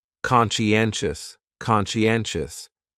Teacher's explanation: That second syllable is what really confuses people, because that sigh almost sounds like you're saying she.